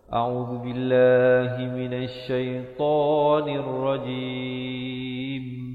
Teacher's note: Zu di hujung lidah.